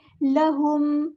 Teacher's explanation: میم پہ ٹائم نہیں دیں گے کیونکہ یہاں پہ اظہار شفوی ہو رہا ہے